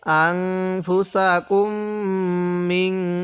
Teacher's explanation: এই নুনের সাথে মিম এখানে নাকের বাঁশি দ্বারা গুণনা করব